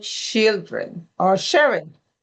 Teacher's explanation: The CH and the SH, we didn't make any distinction between those, those two sounds.